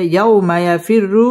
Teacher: ইয়াও জবরের বাম পাশে জজমওয়ালা ওয়াও লিনের হরফ তাড়াতাড়ি পড়তে হবে